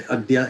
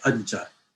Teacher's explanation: So adya becoming ajja is perfectly explainable. The ya palatalizes the da and turns it into a ja, and then you get the two consonants together become geminate ajja.